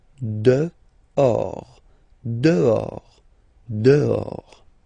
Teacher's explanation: Okay, so remember final S not pronounced, and then this H in French doesn't exist phonetically, so you don't pronounce it.